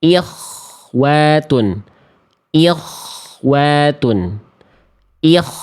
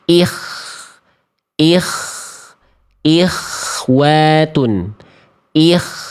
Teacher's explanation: Masih tafkhim, masih terlalu tebal. Ingat kalau misalnya keadaannya adalah k sukun sebelumnya didahului kasrah dia harus melemah kadar tebalnya jangan terlalu tebal